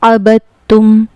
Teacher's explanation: اس میں با کو ہم تا میں ملا کر پڑھیں گے ڈائریکٹ، دال اس کا سائلنٹ ہو جائے گا. اس کا رول یہ ہے کہ اگر تشدید والے حروف سے پہلے والا حرف ساکن ہو، دال چونکہ ساکن ہے تو ساکن حرف سائلنٹ ہو جاتا ہے، پڑھا نہیں جاتا، بلکہ اس سے پہلے والے حرف یعنی با سے ملا کر اس کو پڑھیں گے.